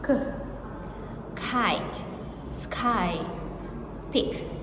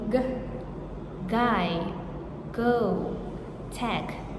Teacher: the velar stops, back of tongue on soft palate. K, Kite, sky, pick, voiceless.